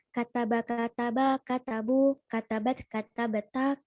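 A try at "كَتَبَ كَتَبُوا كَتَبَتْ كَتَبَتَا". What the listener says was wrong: Ahsan, barakallahu fikum. Alhamdulillah. Ya, sudah bagus.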